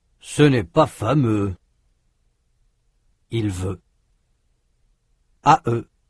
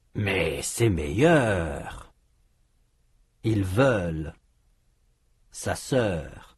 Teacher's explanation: Le son E dans c'est à eux est différent du son E dans c'est sa sœur. Le son E, c'est à eux, est fermé. Le son E, c'est sa sœur, est ouvert.